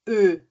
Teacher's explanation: A gente vai falar um E. Então, a boca vai ficar fechada, vai ser uma boca como se a gente estivesse falando um O, mas na verdade o som que a gente vai tirar é o som do E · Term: O tremado